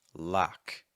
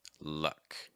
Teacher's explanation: the ah sound like in lock versus our schwa sound like a word like luck